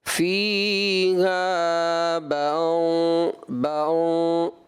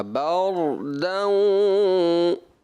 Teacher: ایسا لگا آپ نے ناک سے پڑھ دیا